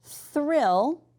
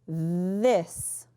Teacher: so with just our breath, it's thrill, and this one's voiced, this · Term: voiced and breathed